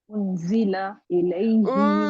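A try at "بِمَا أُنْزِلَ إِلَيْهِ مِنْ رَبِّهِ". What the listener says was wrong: اچھا آپ کے حرکات لمبے ہیں،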